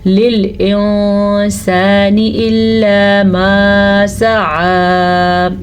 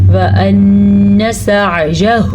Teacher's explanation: نون کے اوپر شد ہے تو نون کا غنہ ہم ہر حال میں ادا کریں گے. یاد رکھیں اگر نون کے اوپر یہ شد آ جائے، یہ جو 3 کنارے سے بنے یہ شد ہے، نون کے اوپر آ جائے یا میم کے اوپر آ جائے تو وہاں پہ غنہ لازمی ہے.